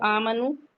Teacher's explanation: آمنو فتح مستقیمہ ہے یا الف مدہ کہہ لیں تو آمنو، یہ 2 کاؤنٹ پڑھیں گے، آ کو اور میم کو جلدی پڑھیں گے، واو مدہ ہے۔ آمنو وعملوا الصالحات، عین کو اس کے مخرج پہ حلقے سے پڑھیں گے، عملوا الصالحات۔